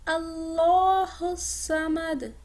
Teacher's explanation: اللہ کو مفخم ادا کیجئے اور صاد کو موٹا مفخم اور دال پر قلقلہ